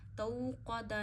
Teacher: क़ौफ मोटा पढ़ा जाएगा, हरूफ मुस्तालिया में से है. मुस्तालिया वो हरूफ होते हैं जो आप हमेशा हर हालत में कुरान पाक में मोटे पढ़ते हैं.